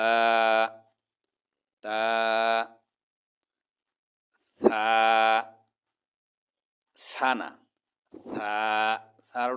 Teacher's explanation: আলিফ বা তাছা বলার সময় জিহ্বার আগা উপরের দাঁতের আগার সাথে লাগিয়ে মাঝখান থেকে হালকা একটু বাতাস বের হবে